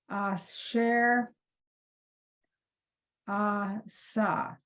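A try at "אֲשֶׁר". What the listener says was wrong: right, very nice.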